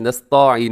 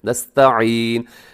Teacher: نستعین میں تا ہے، تا باریک پڑا جاتا ہے، اسے نستعین نہیں کرنا، نستا غلط ہے، نستعین.